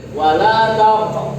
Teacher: Ditentokkan atau dalam bahasa yang lebih lazimnya dipantulkan. Jadi Anda ketika baca kalimat ini wala taqrabu, qafnya harus mantul. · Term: Qalqalah